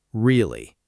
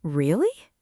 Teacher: Now say it with your voice going up, like you're surprised.